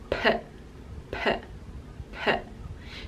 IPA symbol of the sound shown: p